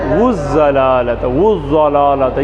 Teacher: ضاد زبان کا کنارہ دایاں یا بایاں اوپر داڑھوں سے